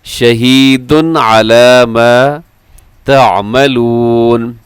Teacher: شہید کے تنوین کے بعد عین ہے تو یہاں اظہار حلقی ہے. آپ یہاں اس کو تیزی کے ساتھ پڑھ دیں گے.